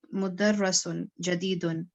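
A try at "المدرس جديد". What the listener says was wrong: یہ آپ اس کو دیکھ کے پڑھا کریں، جب الف لام آتا ہے نا تو پھر ایک ہی پیش آتی ہے. اور یہ مدرس ہے، مدرس یہ زیر ہے یہاں پہ را کے اوپر.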